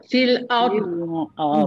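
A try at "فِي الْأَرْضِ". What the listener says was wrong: Di itu dia dah ada baris. Dia hidup. Mati. Dia bunyi dot dalam bentuk mati. Fil arm. Dia mesti kena bunyi dot. Tak mungkin dia takkan bunyi. Kalau memang tak bunyi dot, dia kata fahaman dia dot itu bila dah mati tak bunyi. Salah tu. Kita dah tahu dah dot kena bunyi tapi kita tak bunyi.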